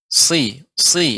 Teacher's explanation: Si, dia seperti sin, akan tetapi tebal, ya, dan dia sifatnya adalah tajam. Si, tidak boleh dia tidak digembungkan, tapi dia lidahnya dinaikkan, ya, sehingga tebal, dinaikkan ke langit-langit.